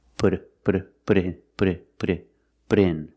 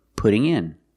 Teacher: The T in put sounds like a fast D.